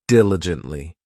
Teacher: this adverb has four syllables and the stress is on that first syllable